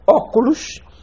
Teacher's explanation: Vocábulos proparoxítonos ou esdrúxulos, exemplo, óculos, com acento na antepenúltima sílaba.